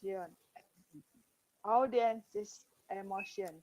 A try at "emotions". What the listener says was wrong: Emotions, not air. All the E sound you're reading air. It's not air, it is E. Emotions.